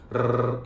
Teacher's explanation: आपने देखा होगा कि जीभ वाइब्रेट होती है, वो टच नहीं होती